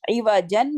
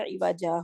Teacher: ٹھیک ہے، to stop عوجا ان سورۃ الکہف ود این الف انسٹیڈ آف تنوین، کہ ہم نے کیا کرنا ہے وہاں پہ الف کے ساتھ وقف کرنا ہے، یعنی عوجا وقف کرنا ہے، نہ کہ ہم نے عوجن کر کے وقف نہیں کرنا